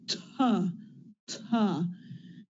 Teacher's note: At the beginning of words, the T is produced with a little burst right after, like ta, ta.